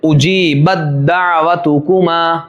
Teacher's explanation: تا کا دال کے اندر دیکھیے اجیبت دعوتکما. تا نہیں پڑھا گیا، ادغام تام